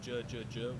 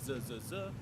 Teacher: this is normally a J sound, j, j, j, without the dot, but it becomes a Z sound, z, z, z, with the dot.